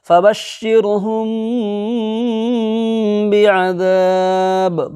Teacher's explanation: ہوگا، یہاں پر میم ساکن کو اخفاء کے ساتھ پڑھیں گے، یعنی ناک کے اندر میں آواز کو چھپا کر کے ایک الف کے برابر کھینچ کر کے گنہ کے ساتھ پڑھیں گے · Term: اخفاء شفوی